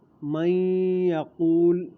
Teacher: نون ساکن کے بعد یا آ رہی ہے تو یہاں ادغام مع الغنہ ہوگا۔